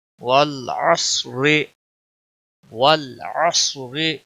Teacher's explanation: صاد موٹا پڑا جائے گا، را باریک پڑا جائے گا، را کے نیچے زیر ہے